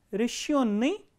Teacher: the passive participle rishyonni, the stress is on yo